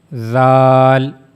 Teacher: top of the tip of tongue and it will meet to the edges of the two top front teeth